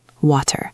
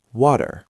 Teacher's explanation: In clear, slow pronunciation or in British English, it's a sharp T, water. But in American English, that T gets soft. It changes into a very quick soft D sound. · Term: flap T